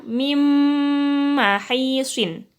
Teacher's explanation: Min mahisin dibaca mim mahisin. Jadi langsung nun sukun masuk ke mim. Jadi seolah-olah nun sukun itu enggak ada ya. Jadi kalau kita baca mim mahisin, jadi nunnya kan suara nunnya kan tidak ada. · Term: idgham bi gunnah